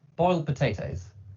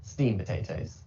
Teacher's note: so in many cases the d is not pronounced